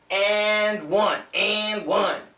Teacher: the n cancels the d and one it sounds like n almost like engine infinity d